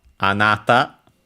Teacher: The standard form for you, accented on the second one, on the second syllable.